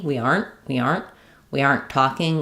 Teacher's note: short N with a stop T.